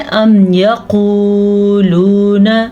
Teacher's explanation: यहाँ पे दो वाव मद्दा है तो हम दोनों को खींच के पढ़ेंगे